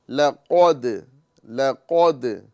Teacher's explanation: कौफ पुर होगा दाल बारीक होगा